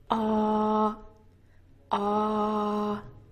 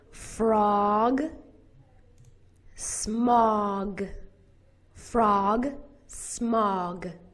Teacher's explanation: This vowel is said with a very open mouth, ah, but you make kind of a circle, ah, ah. Frog, smog, frog, smog.